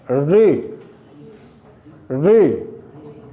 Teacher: जिह्वा को मूर्धा तक ले जाना पड़ता है। मूर्धा तालु का ऊपरी भाग, ऊपरी हिस्सा।